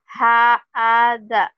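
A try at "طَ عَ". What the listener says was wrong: mana ha ini, yang ini bukan ha, ini mah to.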